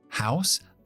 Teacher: normalmente nos hace el sonido ao un diptongo donde abrimos mucho